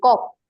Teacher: আচ্ছা, কক বলার সময় যেখানে থামবে, যে কক, তুমি দেখো তোমার জিহ্বার একেবারে শেষ প্রান্ত যেখানে বাজছে, তার মানে এটাকে বলা হয় মূলত কণ্ঠ বা জিহ্বামূলীয়